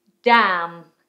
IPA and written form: dæm (Damn)